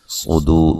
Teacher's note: صاد کو موٹا ادا کریں گے، را کو باریک پڑھیں گے